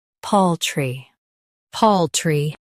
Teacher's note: Emphasize pal and keep tree light.